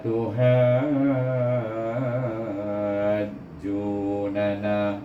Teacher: Semasa saya membaca suku kata ha tu lebih kurang 6 harakah.